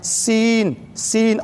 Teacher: سین میں ایک سیٹی ہوتی ہے، سیٹی کے ساتھ پڑھا جاتا ہے. سین سین اور باریک پڑھی جاتی ہے.